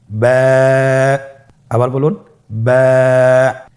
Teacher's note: বা হরফে টান হবে। এক আলিফ টান।